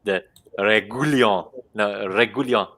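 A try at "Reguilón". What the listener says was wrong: Regulon. The U is silent. Regulon. Regulon.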